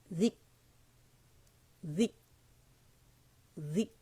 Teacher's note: نے تھروٹ پہ نہیں جانا کاف کے مخرج پہ جائیں گے کاف میں شدہ ہے آواز رکے گی